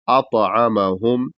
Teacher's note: عین حلق سے ادا ہوگا اور واضح ادا کرنا ہے